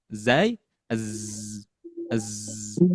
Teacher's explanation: ujung lidah bertemu dengan gigi seri bagian bawah, yaitu huruf zai, huruf sin, dan huruf sod, yang artinya berdesis, seperti desisan suara ular. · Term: sifat sofir